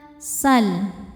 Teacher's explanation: Ada lam sukun di hadapannya bukan lam atau ro. Maka lam dibaca jelas. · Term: lam mutlak